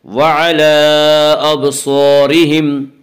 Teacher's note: وَعَلَىٰ أَبْصَارِهِمْ صاد حروف مستعلیہ میں سے حروف مستعلیہ 7 ہیں جو ہمیشہ ہر حال میں پر پڑھے جاتے ہیں، اس سے صاد کو پر پڑھیں گے۔